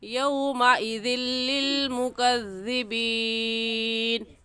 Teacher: ایسے ہی یومئذ، یو یا واو زبر یو، اس کو بھی کھینچ کر نہیں پڑھیں گے کیونکہ واو ساکن سے پہلے زبر آ گیا تو یہ واو لین ہے، اور واو لین کو کھینچ کر یا جھٹکا دے کر نہیں پڑھتے، نرمی سے پڑھتے ہیں